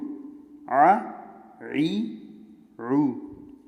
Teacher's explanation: عین کی آواز نرم اور بغیر جھٹکے والی۔ عین زبر آ، عین زیر عی، عین پیش رو، آ عی رو۔